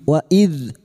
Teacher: dzal sukun, hati-hati jangan dipantulkan, bukan qalqalah.